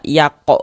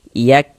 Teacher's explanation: Huruf kaf itu bukan huruf qalqalah. Jadi jangan dipantulkan, jangan dibaca yako begitu, jangan, tapi dibaca yak.